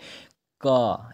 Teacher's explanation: का यानी कि कंठ से बोला जा रहा है का को